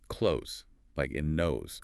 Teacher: When close means to shut, it's a verb and you hear that Z sound at the end.